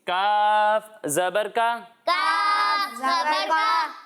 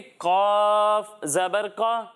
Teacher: एक हर्फ है काफ और दूसरा हर्फ है कौफ। जब हम काफ की अदायगी करेंगे तो इसे बारीक पढ़ेंगे, और जब हम कौफ की अदायगी करेंगे तो इसे मोटा पढ़ेंगे, क्योंकि कौफ भी हरूफ मुस्तालिया में से है।